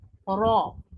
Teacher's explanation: लेकिन इसको अदा करते वक्त होठों को गोल नहीं करेंगे, जबान गोल होगी, होठ गोल नहीं होंगे। अरबिक रा, इंग्लिश रा और मैक्सिकन के दरमियान है। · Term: मोटी रा